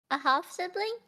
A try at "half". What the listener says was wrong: Okay, so you're definitely pronouncing the L. It's half.